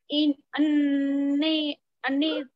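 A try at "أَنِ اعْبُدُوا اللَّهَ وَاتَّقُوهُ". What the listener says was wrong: अन अबुदुल्लाह वत्तकूहु, नहीं खींचना ना उसको,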